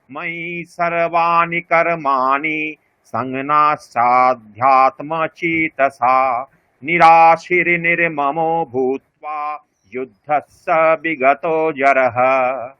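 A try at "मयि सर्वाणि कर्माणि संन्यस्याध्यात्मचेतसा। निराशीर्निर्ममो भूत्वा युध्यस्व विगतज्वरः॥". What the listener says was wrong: কিছু কিছু জায়গায় আপনার ওই দীর্ঘ উচ্চারণগুলো একটু ভুল হচ্ছে,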